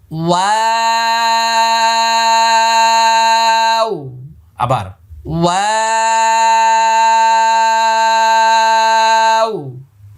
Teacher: ওয়াও একটি মাত্র হরফ, কোরআন মাজিদের যেখানে পাবেন, যে কোনো অবস্থায় পাবেন, ঠোঁট গোল হবে। ওয়াও, শুরু এবং শেষ দুই জায়গায় ঠোঁট গোল।